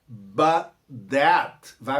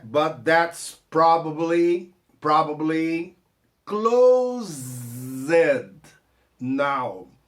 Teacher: But that, vai morrer o T do but por causa do T do that